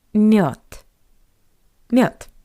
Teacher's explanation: By the way, have you noticed that the voiced consonant D at the end of this word also sounds like the paired voiceless consonant T? Not мед, but мед.